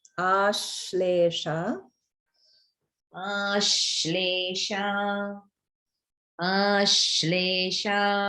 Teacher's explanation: There's a little more holding on the ish.